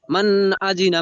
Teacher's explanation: হালকা একটুখানি দাঁড়িয়ে যাবেন কিন্তু গুন্না করবেন না